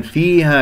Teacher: ونقف بالمد الطبيعي، مقدار حركتين ألف ساكن قبلها مفتوح